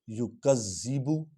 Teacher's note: با جو ہے یہ حرف شفوی ہے، با 2 ہونٹ ملتے ہیں تو با ادا ہوتا ہے۔